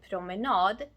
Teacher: suffix nad is stressed. That is, it's pronounced longer and louder.